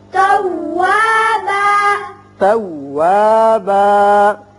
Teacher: وقت کی صورت میں ایک الف کے برابر آواز کھینچی جائے گی